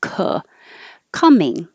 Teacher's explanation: the vowel now is uh as in up so you should be low in the middle